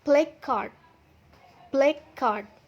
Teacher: saat kita mengucapkan kata pertama ke kata kedua terdapat jeda di tengahnya